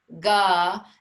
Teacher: So the ga emanates from the throat.